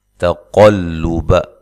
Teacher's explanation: قاف کو موٹا ادا کرنا ہے، تا کو باریک پڑھنا ہے، لام کو بھی باریک پڑھنا ہے